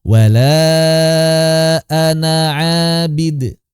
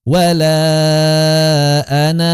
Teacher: Enggak dibaca panjang. Gugur saat wasol. Alifnya gugur saat wasol.